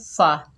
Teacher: इलस्समाई, फ़ा के ऊपर ज़बर, बगैर खींचे पढ़ेंगे फ़ा। फ़ा ऊपर वाले दांतों के किनारे नीचे वाले होंठ के शकम में लगाएंगे तो फ़ा अदा होगा।